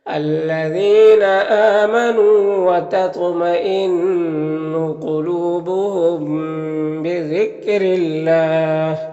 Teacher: یہاں پر اللہ کے لام سے پہلے را کے نیچے زیر ہے تو اللہ کے لام کو باریک پڑھیں گے